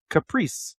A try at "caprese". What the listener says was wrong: Caprese. Caprese. It is not a caprice. The final E is pronounced Z. Caprese.